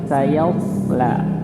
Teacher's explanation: Kalau bacanya saya jadi ya-nya ikut tebal. Jadi tetap posisinya ya-nya itu tipis, so-nya yang tebal.